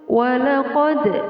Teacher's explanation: Walaqad terdapat hukum bacaan qalqalah. Qalqalah artinya memantul. Di sini ditandai dengan huruf dal sukun. Di sini qalqalah ini dinamakan qalqalah sughra atau qalqalah kecil karena berada di tengah ayat.